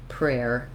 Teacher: You can say prayer, prayer, but you'll hear most people reduce that down to just prayer, the air diphthong · We reduce this to more like one syllable. So the same strategy we used with prairies is the first part of prayer, starting first with my air, then adding my R, rare, prayer, prayer.